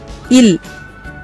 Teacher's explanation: மேல்வாய் பல்லின் அடியை நாக்கின் ஓரங்கள் தடித்து நெருங்குவதால் பிறக்கிறது. இல் இது மேல்வாயை நாக்கின் ஓரங்கள் தடித்து தடவுதலால் பிறக்கிறது.